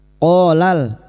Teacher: qo fathah diguti alif dua harakat mad thobi'i. Qola lam takrif yang bertemu mim idhar qamariah.